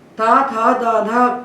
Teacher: ता था द धा का उच्चारण स्थान दंत है